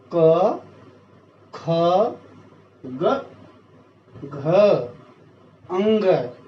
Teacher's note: ये सारे के सारे शब्द वर्ण जो हैं ये कंठ से बोले जाते हैं। इस गले को संस्कृत भाषा में कंठ बोला जाता है, तो इसीलिए इसका उच्चारण स्थान कंठ हुआ।